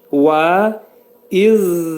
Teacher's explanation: Pərtək zəl hərfi. Dilimiz iki dişin arasına xəfif girəcək, daxil olaraq pərtək zə deyirik.